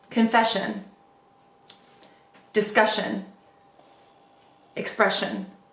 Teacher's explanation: because it ends with an S already, it blends really easily when we say it into the shun sound.